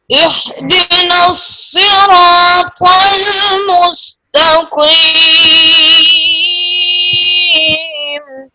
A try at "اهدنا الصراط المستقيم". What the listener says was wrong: اب ہا کو آپ نے ہا سے بدل دیا ہے، ہا کو صحیح پڑھیے، پھر پڑھیے اہدی.